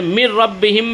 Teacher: تنوین یا نون ساکن کے بعد اگر یرملون یعنی یا را میم لام واو میں سے کوئی حرف آئے تو ادغام ہو جاتا ہے نا، وہ مل جائے گا، تنوین والا تنوین کی آواز سائلنٹ ہو جائے گا نا، یا نون ساکن کی آواز سائلنٹ ہو جائے گی. جیسے مر ربہم میں نون کی آواز اسکپ ہو گئی، سیدھا ہم لوگوں نے میم کو یرملون میں سے را آیا اس کے ساتھ ادغام کر دیے.